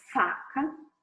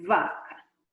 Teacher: E o V, ele, né, o da direita já é vozeado, já é voiced, vaca. Um não vibra, o outro vibra.